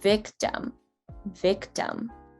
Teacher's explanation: towards the end of this word we completely fall off and the softest way to pronounce an i is the uh sound because you're barely letting out any actual vocal strain